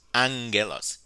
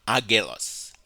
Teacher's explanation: By definition, gamma nasal happens when two gammas come together, and when they come together, they are pronounced with an N sound.